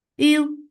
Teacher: This is mad arid lis sukoon. You for the circle lips, the sound is soft and short